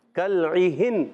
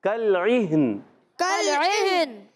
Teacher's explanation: ہاں کو بھی ساکن رکھنا ہے، نون کو بھی ساکن کرنا ہے